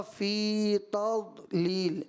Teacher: تا کے بعد داد اگرچہ ساکن ہے، لیکن داد کیا ہے؟ حروف مستعلیہ ہے، تو تا باریک واضح کرنا ہے اور دعات کو واضح پور کر کے ادا کرنا ہے.